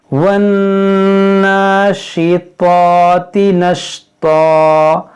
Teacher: देखिए यहाँ पर नून मुसद्दद है, इसमें गुन्ना करेंगे, खड़ा ज़बर है तो इसे एक अलिफ के बराबर खींचेंगे, और यहाँ देखें बड़ी शीन है और यहाँ ता है और ता है, दोनों में फ़र्क करेंगे, और यहाँ पर भी देखें ता है।